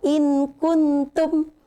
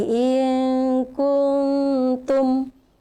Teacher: Nunnya atau tanwinnya tidak boleh dibaca jelas. Jadi samar-samar. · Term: ikhfa